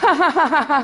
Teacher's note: you find nasality in posed laughter